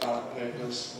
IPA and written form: ˈbæləʔ ˌpeɪpəz (ballot papers)